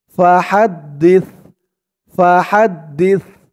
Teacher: সার উচ্চারণটা একদম নরম পাতলা হবে